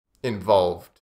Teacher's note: the second V is quite soft